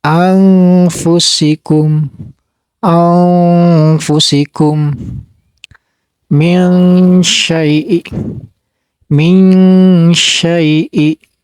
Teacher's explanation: Dan cara bacanya ini pertengahan ya, antara ang sama an. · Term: ikhfa awsat